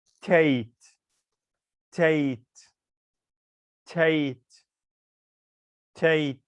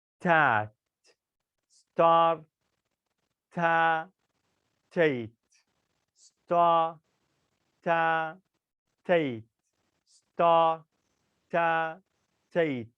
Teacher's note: this word at finished with consonant, and the next word starts with vowel. So we say them together.